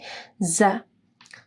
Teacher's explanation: زال جب آپ پڑھیں گے تو آپ کی زبان کی نوک اوپر کے دو دانتوں کے پاس آئے گی، اور زا جو آپ پڑھیں گے، ٹھیک ہے، تو پھر آپ کی زبان کی نوک نیچے کے دانتوں کے پاس جو گوشت ہے وہاں پہ رکھنی ہے اور نرم ادا ہوگی، زا۔